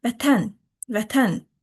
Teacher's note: Demək ki, ən hecasında vurğu var.